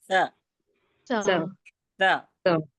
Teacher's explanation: जबान की नोक को सामने के ऊपर के दो दांतों के किनारे से पहले लगाइए और फिर अदा करिए